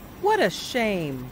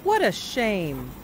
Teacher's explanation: his voice goes up when he mentions the word shame. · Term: intonation